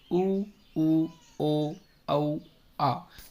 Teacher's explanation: जिन स्वरों के उच्चारण में जिभ्या का पिछला भाग सक्रिय रहता है। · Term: पश्च स्वर